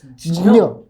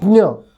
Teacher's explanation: In Sanskrit, it is actually half j and half y.